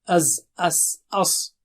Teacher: safir, having whistling there